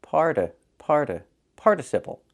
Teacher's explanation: When the stress is on the first syllable the t changes to a fast d.